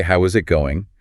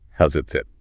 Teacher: Natives will fuse those sounds together. That t in it just vanishes or becomes this quick tap and the whole thing rushes together to sound like how's it sit?